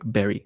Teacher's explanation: japanese people often sound like they're saying b like berry